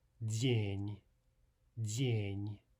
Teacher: Now there's a nice example where both consonants are soft, right? De, because it's followed by one of the soft vowels, yeah, and N because it's followed by a soft sign.